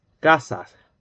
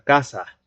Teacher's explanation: Como una J al final, como si hubiera una J. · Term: Aspirada la S